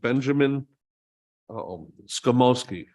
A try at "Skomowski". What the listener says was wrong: You didn't. Extra vowel, but close enough. Skomsky, yeah,